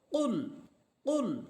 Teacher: কাফ of লাম পেশ কুল অফ এটা এর মাখরাজ হচ্ছে কণ্ঠনালীর জিহ্বার গোড়া তার বরাবর উপরে তারুর সাথে লাগবে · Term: কফ হরফের মাখরাজ